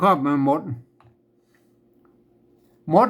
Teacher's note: หมดหมดเนี่ยภาษาไทยเพิ่นออกเสียงเอกนะครับ